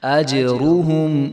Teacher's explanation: جیم چونکہ حروف قلقلہ میں سے ہے تو یہ ساکن ہے، تو اس کے اوپر جو ہے ہم اس کو جو ہے ہلا کر پڑھیں گے